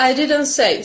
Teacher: t falls out when we say fast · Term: Elision